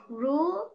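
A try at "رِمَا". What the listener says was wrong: নাই। হ্যাঁ, র নিচে যে রি, তারপরে রজের রি, মিম জবর মা, রজের রি, রিমা রিমা রিমা রিমা রিমা।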